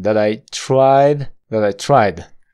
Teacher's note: vamos a unir that with i d con una flap te